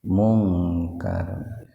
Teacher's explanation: Mungkar ikhfa samar, tapi dibaca samarnya sepintas saja karena nun mati ketemu kapnya dalam satu kata